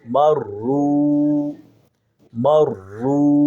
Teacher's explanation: میم شد کو تھوڑا جما کے پڑھیں گے، اور واو کو سکون کے ساتھ جزم کے ساتھ پڑھیں گے۔ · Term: تشدید